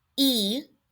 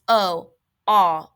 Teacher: E for eagle is pronounced in the front of the mouth versus ah, which is pronounced more in the back